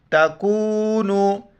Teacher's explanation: تا کو واو کے ساتھ ملائیں گے اور نون کو بھی واو کے ساتھ